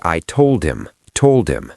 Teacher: It sounds like one word, told him. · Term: H dropping